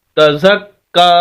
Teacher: تا زبر تا، زا زبر کاف زک، تزک، کاف کھڑی زبر کا، تزک کا، آگے یا خالی اس کو نہیں پڑھیں گے، کاف کو سخت کر کے اور لمبا کر کے کھڑی زبر کی وجہ سے